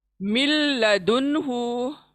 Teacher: नून साकिन को वहीं छोड़ा हमने और लाम को ले लिया, क्योंकि लाम शब्द बड़ा है, नून साकिन के निस्बत लाम शब्द बड़ा है, इसलिए हमने लाम को ले लिया।